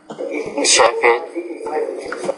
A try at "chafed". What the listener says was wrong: But it's only one syllable. Chaffed. And it ends in a T. Chaffed. It's shaft. One syllable there. So you're having trouble with the ED and the T there. Actually, chafed, shaft. I think the first sound is chafed, shaft.